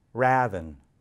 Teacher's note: its pronunciation shifted forward in the mouth to the familiar sound of ah as in bad